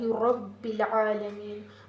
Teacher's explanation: یہ موٹا بھی پڑھا جاتا ہے. جب را کے اوپر زبر یا پیش ہو تو ہم اسے پر پڑھتے ہیں، موٹا پڑھتے ہیں